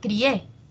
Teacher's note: Pero esto es un diptongo, ¿no? Hay una cerrada, una abierta, y la que suena más es la abierta